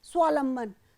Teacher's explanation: यहां पर व का लोप किया गया है